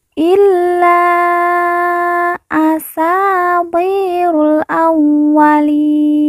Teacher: ru langsung masuk huruf lam, alif tidak dibaca